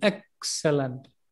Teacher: The stress is on the first syllable. Excellent. It becomes very low and slow.